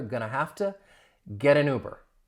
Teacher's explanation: Link that entire phrase, that final T in the get. I'm going to pronounce it as a flap T.